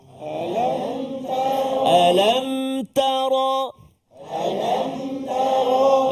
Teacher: Bagus, subhanallah, tepat, jelas bunyi ra, tebal, tafkhim.